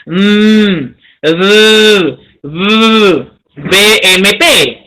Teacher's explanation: Se le llama bilabial, dos labios, porque se produce por el cierre entre los labios inferiores y superiores. Inferior y superior, bilabial.